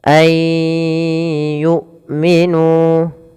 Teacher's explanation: suara nunnya kita masukkan kepada huruf ya Dan kita tahan suara huruf y-nya